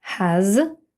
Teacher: has теж закритий склад a читається як широке a s після голосної йде звук з has No Отже в Британській